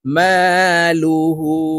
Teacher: মিম আলিফ জবর মা লাম পেশ লু হা উল্টা পেশ হু হা উপরে উল্টা পেশ আছে তাই এই হা কে ঠোঁট গোল করে এক আলিফ টেনে পড়বো